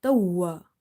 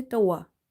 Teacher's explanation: Emphasize on waw in order to pronounce it twice. If you say tawa in hurry, then you will end up pronouncing one waw.